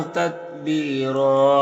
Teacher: یہاں پر وقف کریں گے تو ایک زبر کے ساتھ الف پڑھیں گے اور را کو پر پڑھیں گے اس طرح سے.